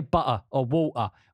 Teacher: instead of a T, I do a glottal stop, which is where all the air kind of stops in my throat